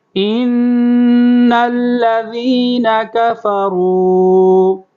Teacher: یہ نون کے اوپر مشدد ہے، تشدید ہے، تو نون کو ناک میں آواز لے جائیں گے، غنہ کریں گے